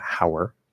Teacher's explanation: how and are will commonly contract to hower. So we get ow plus and there's going to be a small w link between them, hower.